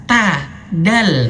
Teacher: Dal itu kan dia menyentuh tempat tumbuh gigi seri atas.